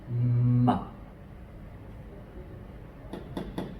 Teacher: The M makes a M sound. M. It's like I'm humming with my lips closed.